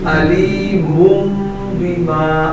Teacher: ये नून की आवाज मीम में तब्दील हो जाए, नून के बाद मुन नहीं पढ़ा जाएगा, मुम पढ़ा जाएगा। अलीमुम बिमा, लेकिन गुन्ना भी होगा। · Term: इक़लाब